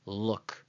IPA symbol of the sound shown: l